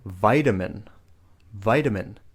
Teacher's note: we're pronouncing that T sound like a D